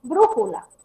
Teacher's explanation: mayor fuerza de voz en la antepenúltima. Tónico ante penúltima. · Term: esdrújulas